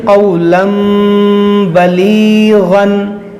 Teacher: تنوین کے اندر جو نون ساکن ہے اس کو میم سے بدل کر اخفا کریں گے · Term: اقلاب